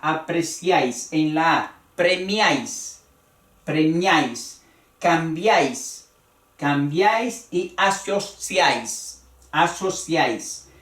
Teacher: en un solo golpe de voz va el triptongo.